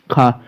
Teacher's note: खा कंठ ध्वनि के अंतर्गत भी आएगा। अघोष भी होगा।